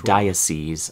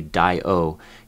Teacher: I think it's a schwa on the O.